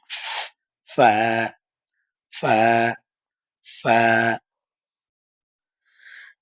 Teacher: ধরেন ধইরা সামনের উপরের দুই দাঁতের আগার সাথে লাগান দুইটা দাঁত নিচের ঠোঁটের পেটের সাথে লাগাই